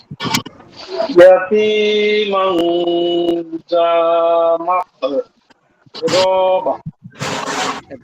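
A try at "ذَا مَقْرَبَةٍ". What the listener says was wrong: রতে একটু টান হয়ে গেছে, আর জালা একটু পাতলা হবে। মাকরাবা।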